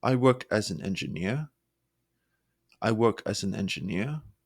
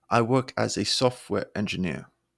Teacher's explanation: fade at the end of a sentence making them sound uncertain so really really stressing that final word adds confidence